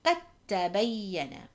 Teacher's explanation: we would disregard the letter dal and we would join the qaf fata to the ta fata. And you can see there is a shadda on the ta.